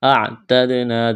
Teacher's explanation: دال پر قلقلہ کریں گے